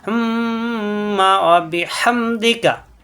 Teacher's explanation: মিমে তাসদিদ অজিব গুন্না মুখ বন্ধ রেখে, অর্থাৎ ঠোঁট বন্ধ রেখে গুন্না হবে, নাকের ভিতরে গুনগুন হবে।